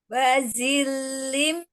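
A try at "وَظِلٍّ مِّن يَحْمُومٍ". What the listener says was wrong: Wadhil, ya, huruf dha, ujung lidahnya ada di ujung gigi seri atas. Keluarkan ujung lidahnya sedikit ya. Wadhil, bukan wazil. Wadhil, ujung lidahnya keluarkan.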